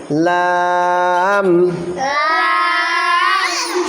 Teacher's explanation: জিব্বার আগা সামনে উপরে দুই দাঁতের গোড়ার সঙ্গে লাগান